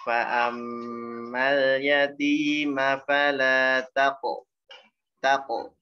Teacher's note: Nah, qafnya pantulannya tebal. Tanya tipis.